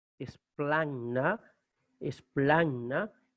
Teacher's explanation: gamma delante de hi tiene un valor de nasal